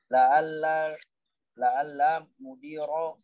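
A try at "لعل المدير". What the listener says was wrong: Nah ini yang ada alif lamnya malah enggak antum baca alif lamnya. la'allal gitu loh ya, baca aja ya.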